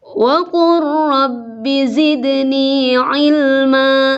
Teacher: langsung ke ro, lamnya sama sekali tidak dibaca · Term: idgham mutaqaribain